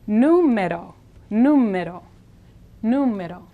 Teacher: Now here the R is like the fast double D of the English word buddy.